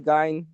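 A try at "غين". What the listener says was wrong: গাইন নয়, গয়েন, গয়েন। গাইন নয়, গয়েন, গয়েন। গ, গ বলবেন, গ যেমন মুখ গোল হয়।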